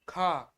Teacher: का से ज्यादा हमको वायु की प्राण की आवश्यकता हो रही है कि खा, है ना, तो हमारा यह महाप्राण हो जाएगा। · बोलेंगे क तो उसमें हल्की आवा आ रही है लेकिन हम जब ख बोलते हैं तो क से ज्यादा हमको वायु की प्राण की आवश्यकता हो रही